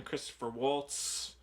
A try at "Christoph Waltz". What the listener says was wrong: Christoph. It's not Christopher.